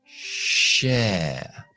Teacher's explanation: La lengua no toca paladar con la sh.